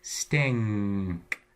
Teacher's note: that N before a K is pulled into its own allophone. Instead of being an N, it's an ang, stink, like an ing.